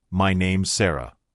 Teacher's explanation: You can also shorten it naturally in speech to my name's Sarah. Notice how is becomes s. This sounds smooth and natural.